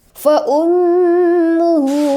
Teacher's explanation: panjangnya dua harakat oke wamaat mawin faummuhu hawiah faum itu Gun mim bertasdid Ya dengungkan selama tiga atau dua harakat